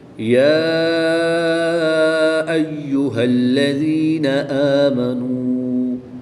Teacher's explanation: کھڑی زبر کے بعد حمزہ دوسرے کلمے میں ہے تو یہاں پر مد منفصل ہوگی، 2 سے 3 الف تک کھینچ کر پڑھیں گے · یا ساکن سے پہلے حرف کے نیچے زیر ہے تو یا مدہ ہوگا، 1 الف یعنی 2 حرکات کے برابر کھینچ کر پڑھیں گے